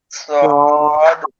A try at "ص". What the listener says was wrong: মুখ গোল হবে না। সদ।